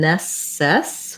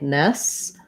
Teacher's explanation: this letter E is unstressed and short. So rather than nesses with another vowel, it's more of a schwa